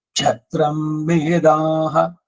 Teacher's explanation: ಬ್ರಹ್ಮಮೇದ ಅಂದಮೇಲೆ ಕ್ಷ ಅನುದಾತದಲ್ಲಿ ಕೇಳಬೇಕು